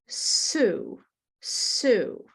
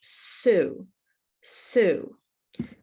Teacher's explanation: The tongue is behind the teeth, close to the teeth in the front. It's not at the back. And you may notice that the sides of the tongue are are curl up a little bit. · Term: s- sound